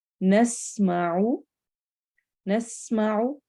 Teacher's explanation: सीन में सीटी वाली आवाज है